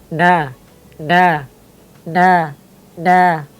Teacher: Nun itu ujung lidah bertemu dengan langit-langit